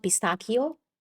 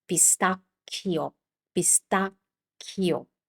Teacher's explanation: this has a double c, so you keep this the hard sound for longer. It's not pistacchio, it's pistacchio, pistacchio.